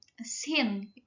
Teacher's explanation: Sin itu pembacaannya tipis dan tidak ada getaran.